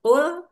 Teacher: qof itu keluar atau berasal dari pangkal lidah dengan langit-langit atas kemudian tertukar dengan kaf yang berasal dari pangkal lidah agak ke depan sedikit dari qof.